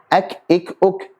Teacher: Jadi kaf sama ta punya sifat apa? Syiddah dan hamz. Syiddahnya ini lebih dominan daripada hamznya. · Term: sifat syiddah